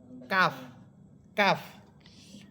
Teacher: কাফ হরফের মাখরাজ হবে জিহ্বার গোড়া থেকে একটু উপরের দিকে বেড়ে, একটু উপরের দিকে উঠে উপরের তালুর সাথে রাখবে,